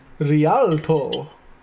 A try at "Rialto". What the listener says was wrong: You need to roll the R. Roll it!